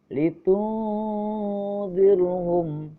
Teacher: Yang kedua, litunzirhum, ada hukum bacaan ikhfa hakiki karena ada nun sukun bertemu zal. Cara membacanya harus didengung dan disamar.